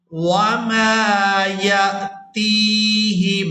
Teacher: اعوذ باللہ من الشیطان الرجیم، بسم اللہ الرحمن الرحیم، وما یأتیہم، یہاں پر ہم نے ہا کو میم مشدد کے ساتھ ملانا ہے، میم ساکن کو یہاں پر چھوڑ دیا جائے گا۔ ہا کو میم مشدد کے ساتھ ملاتے ہوئے غنہ کے ساتھ ادائیگی کریں گے